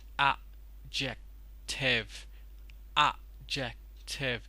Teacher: As you can see over here, I've got three words in the list, and they have something in common, that you're not going to pronounce the d sound in it